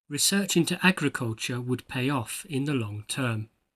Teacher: In terms of pronunciation, you may have noticed that I emphasized the second word.